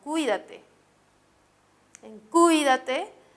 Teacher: la mayor intensidad se encuentra en la antepenúltima sílaba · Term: acento